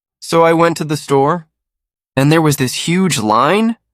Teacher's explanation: English speakers often make statements sound like questions by raising their pitch at the end. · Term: rising intonation